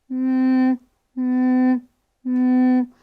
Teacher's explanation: Eu tenho o impacto, o contato entre os lábios, mas aqui eu tenho vozeamento, então eu já tenho som de voz e ela é nasal. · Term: consoante M